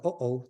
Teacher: either a glottal stop, like uh-oh, the kind of consonant sound between those two vowels, or even just a vowel marker, depending on where it is in the word and on the word.